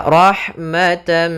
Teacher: Cara membacanya adalah tanwinnya atau nunnya masuk kepada huruf setelahnya. Maka rahmatan sambil ditahan gunnahnya. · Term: idgham bi gunnah